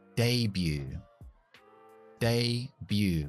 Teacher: nosotros decimos debut. No pronunciamos la T.